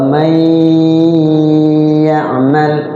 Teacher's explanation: Jadi cara bacanya nunnya dimasukkan ke ya dan dia-nya digunnah, dilagukan. Maksudnya dilagukan tuh ditahan bareng 2 ketukan boleh lebih sambil diayun dilagukan. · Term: bigunnah